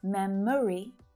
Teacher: memory with that little extra schwa syllable in the middle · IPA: /'me m(ə) ri/